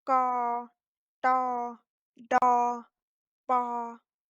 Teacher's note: Лікатери середнього класу вимовляються без придуху, тобто твердо. Тон середній або іншими словами рівний